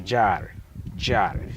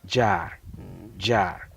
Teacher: You are not hearing just one sound. There's D and then J put together.